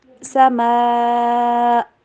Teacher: اینڈ پہ کٹ ہوئی sound آئے گی، مینس دیٹ آواز حلق سے نکلنی، ہوا نکلنی بلاک ہو جائے گی